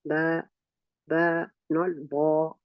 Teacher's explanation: You see the back of the tongue in ba is not raised. So now you know that ba is a tarqiq letter. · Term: thin letter